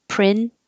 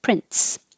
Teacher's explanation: when you release the tongue from the top of the mouth the airflow comes out and it bursts and it sounds like a tiny T